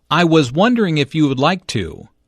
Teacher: nervous and does not want to appear too direct or bold notice how the question goes up at the end which shows that he is not overly confident